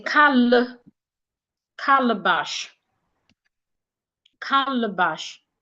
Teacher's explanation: But the second letter A there would not sound A again. It becomes a schwa.